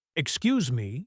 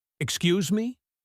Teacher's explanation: The tone of your voice changes the meaning completely. A falling tone, excuse me, is polite. A rising, sharp tone, excuse me, is a challenge.